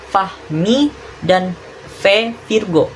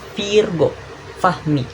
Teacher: bunyi labiodental, bunyi bibir dan gigi. Cara kita melakukannya itu bibir bawahmu naik menyentuh atau mendekati gigi atasmu